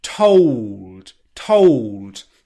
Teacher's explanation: on the o diphthong which means that when you start the the o diphthong you start in a more rounded position · he's let the dark l take its effect on the o diphthong